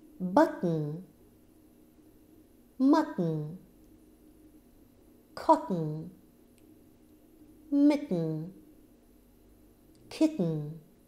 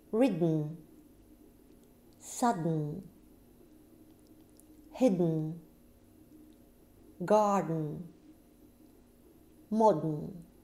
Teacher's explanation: Тн. Звук проходит через нос, и у вас внутри происходит тоже взрыв. Но теперь не во рту, а в носу.